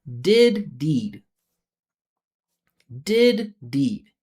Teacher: Listen, the length is going to be the same.